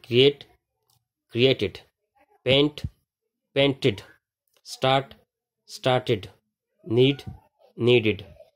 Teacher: the final ed is pronounced like id sound